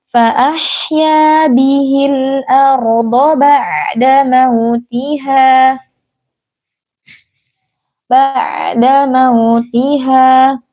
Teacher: Dalam kata arda ini ro-nya tebal, jangan dibaca arda, jangan seperti itu ya Umi, dibaca tebal karena ya sebelumnya adalah huruf berharakat fathah.